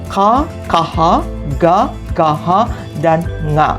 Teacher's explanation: suara yang dihasilkan dengan mendekatkan lidah ke langit-langit dekat kerongkongan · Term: gultural atau kantil